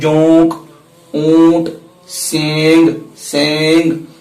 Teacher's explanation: یہ جو نون کی آواز ہے، نون کی آواز اس کو ہم ظاہر نہیں کرتے ہیں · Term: اخفاء